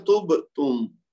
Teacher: बा साकिन कुतुब जद में से है लेकिन ये लफ्ज के आखिर में नहीं है, तो बीच में है, तो इसलिए इसको झटका हल्का देंगे, कलकला सुगरा होगा।